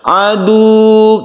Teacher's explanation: Kalau ini sukun wawu tanpa tasydid, maka kita membacanya itu seperti mad tabi'i.